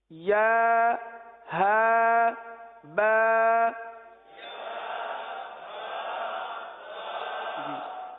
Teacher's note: یا جو ہے یہ وسط لسان، وسط تالو، زبان کے درمیان اور تالو کے درمیان سے ادا ہوتا ہے، اور ہا جو سینے سے متصل حلق ہے یہاں سے ادا ہوتا ہے